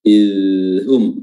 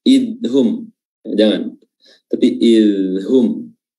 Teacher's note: huruf dzal di sini makhrajnya adalah ujung lidah diapit oleh kedua gigi, dan ketika dia sukun seperti ini, ya, untuk lebih memaksimalkan bunyi dari huruf dzal itu, maka dia sedikit mengalir, ya.